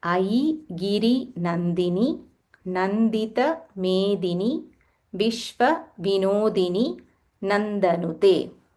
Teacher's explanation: there are no Mahapranas. Simple, you don't have to stress or use more aspiration